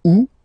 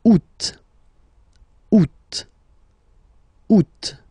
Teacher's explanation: The first one, you don't pronounce the final T. Ou. Second one, you pronounce it.